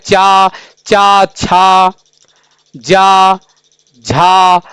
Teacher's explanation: इसका उच्चारण होता है तालू से यानी ये तालव्य ध्वनियां है